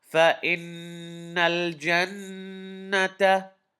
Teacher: Uh, there are 2 times I have to do ghunna. Noon shadda, I have to do ghunna on it. I have to hold it in my nose a little bit.